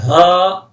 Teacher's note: وہ سینے سے نکلتی ہے